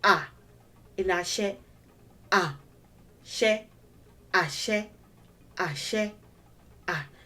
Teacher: is actually going low when you say ah ah say ah it starts on a low level when you're saying it correctly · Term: do tone